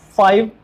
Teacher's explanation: F and V are the two labiodental fricatives.